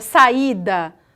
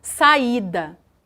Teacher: o i ele não é pincelado ele é pronunciado de uma maneira tão forte quanto o a é por isso que não é possível colocá-lo numa mesma sílaba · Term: iato